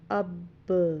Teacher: ہلانا اس طرح سے کہ جس مخرج سے وہ لفظ ادا ہوتا ہے، پڑھا جاتا ہے، اس کو آواز جو ہے پلٹ کر گیند کی طرح اس ہی مخرج سے دوبارہ ٹکرائے۔ جیسے حمزہ پڑی زبر با ساکن اب۔ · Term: قلقلہ